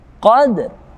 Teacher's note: ringan kita membaca qalqalahnya, namun tetap kita baca ra dengan tipis karena sebagai waqaf atau akhir ayat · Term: qalqalah sughra